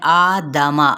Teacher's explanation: مد اصلی بالالف کا قائم مقام ہے، جس کا مطلب ہے ایک الف کے برابر کھینچنا